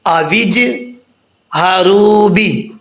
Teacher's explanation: جیم جو ہے ساکن ہے، حروف قلقلہ جب ساکن ہوں تو ان میں قلقلہ ہوتا ہے، تو جیم میں قلقلہ ہوگا